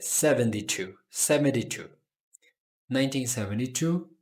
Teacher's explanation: é pronunciado como um D ali, ao invés de T